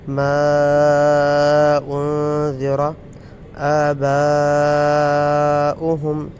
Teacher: یہ ما انذر، یہ مد منفصل ہے۔ آباؤہم، یہ مد متصل ہے۔ دونوں کی مقدار برابر ہی ہے، دونوں کو لمبا کریں گے